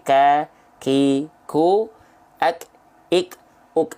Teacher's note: pengkhususan untuk dua huruf, salah satunya adalah huruf kaf, dia hanya berupa percikan-percikan nafas saja. Ya, kadarnya hanya dipercikan saja dikit. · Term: hams